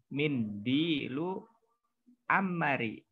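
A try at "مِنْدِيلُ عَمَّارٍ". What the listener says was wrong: Ammarin. Ammarin pakai tasdid ya. Nah, pakai tanwin. Iya, Ammarin karena dia nama orang. Ya, maka dia pakai tanwin. Tapi selama nama orang maka dia pakai tanwin makanya ya.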